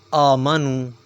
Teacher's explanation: حمزہ کے اوپر کھڑی زبر ہے، اس لیے اسے ایک الف کے برابر کھینچا جائے گا۔